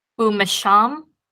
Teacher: very first word um you can see the conjunction that is the form that the conjunction takes before a labial that is before a consonant that is pronounced with the lips